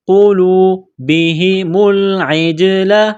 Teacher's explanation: یہ گول ہا ہے چشمے والی، منہ سے ہوا نکالنے کی طرح صرف اس کو پڑھتے ہیں